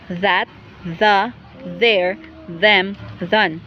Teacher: voiced dental fricative initial